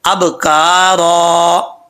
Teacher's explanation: اور آگے جو ہے اب کا را, با ساکن ہے, جب با کے اوپر با کو پڑھیں گے تو قلقلہ کریں گے, کیونکہ حروف قلقلہ میں سے ہے, جب یہ حروف ساکن ہوں تو قلقلہ کیا جاتا ہے. اب کا را وقف کریں گے تو ایک زبر جو ہے وہ الف سے چینج ہو جائے گا. عام سادہ لفظوں میں آپ یہ سمجھیں کہ یہ وقف میں الف پڑھا جائے گا.